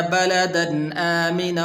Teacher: غنہ نہیں کریں گے اس لیے کہ آگے حمزہ حروف حلقی میں سے ہے